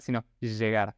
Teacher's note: Es como la SH que vamos a ver ahora, pero haciendo vibrar las cuerdas vocales. Es la única diferencia que tienen estos dos sonidos.